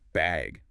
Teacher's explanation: they might ask, do you need a bag or even just bag with a rising tone